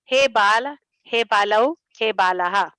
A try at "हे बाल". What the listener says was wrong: हे बाल एमा ल अर्धो नहीं, ल संपूर्ण है એટલે संपूर्ण बोलवाना.